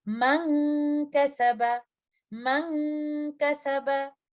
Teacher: Letter कैफ एक light letter है, तो इस सूरत में गुन्ना भी लाइट होगा। कंप्लीट गुन्ना का टाइम देते हुए हम इन अल्फाज की अदायगी इस तरह से करेंगे, मन कसबा, मन कसबा।